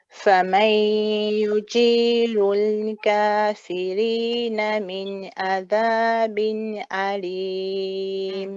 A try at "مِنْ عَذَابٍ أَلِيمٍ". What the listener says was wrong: Don't forget that slight squeeze for the ain here. من عذاب أليم.